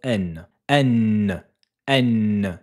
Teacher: la lettre noun se prononce avec le bout de la langue qui rentre en contact avec le début du palais